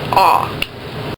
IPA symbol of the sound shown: ɔ